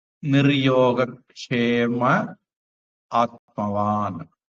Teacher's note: அடுத்தது நிஹி யோக சேரும்போது விசர்க்கம் இர்ரா மாறி நிர்யோக அப்படின்னு மாறிடும். நிர்யோக க்ஷேமஹ அக விசர்க்கம் அடுத்தது ஆ வந்ததுனால அந்த விசர்க்கம் மறைஞ்சிருது.